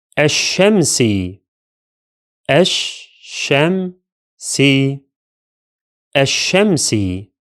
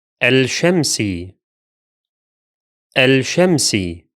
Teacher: the lam here is silent and the sheen is doubled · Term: solar